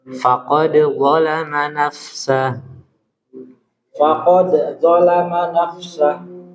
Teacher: Jadi biarkan huruf dal itu qalqalah dan mengalir.